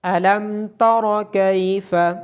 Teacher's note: را کو موٹا پڑا جائے گا